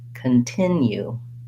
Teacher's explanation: rhythms so for example in continue i'm going to listen for that rhythm of second syllable stress that it goes short long short